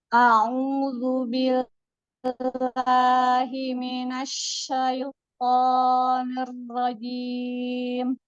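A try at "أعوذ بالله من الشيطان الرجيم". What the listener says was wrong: sedikit lagi ditahan roknya. Ar-rojim.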